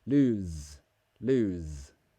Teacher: it's a voiced sound it has vibration in the throat